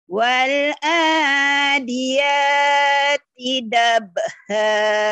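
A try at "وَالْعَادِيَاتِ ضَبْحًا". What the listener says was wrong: Jangan dab, dob. Jangan dab.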